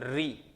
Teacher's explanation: री का उच्चारण आप करिएगा तो देखिएगा आपको जिह्वा वाइब्रेट होगी र की तरह